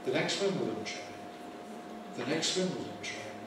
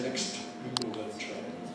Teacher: I dropped the T from the end. Elide the T.